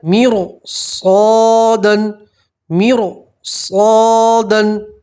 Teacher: آپ پور پڑھیں گے، ٹھیک ہے، باریک نہیں پڑھیں گے کیونکہ را ساکن کے بعد پورا حرف آ گیا تو اب را کو آپ پور پڑھیں گے، باریک نہیں پڑھیں گے